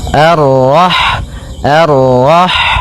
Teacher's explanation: Ha yang berharakat sukun dan sifat ha itu yang paling mencolok adalah sifat hamasnya yaitu mengalirnya nafas ketika kita membacanya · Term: sifat hamsnya